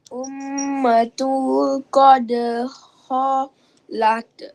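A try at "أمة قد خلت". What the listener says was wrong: Kalau ta ni kalau kita wakaf dia tak boleh baca kholat. Dia kena baca dengan nipis sekali. Kholats.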